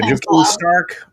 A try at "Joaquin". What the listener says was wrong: I think it's Joaquin. J is silent.